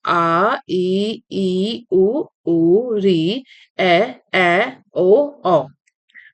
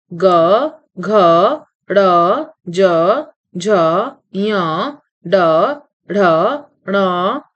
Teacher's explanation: इनका उच्चारण करते समय यदि गले पर हाथ रखा जाए तो कंपन का आभास होता है। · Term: सघोष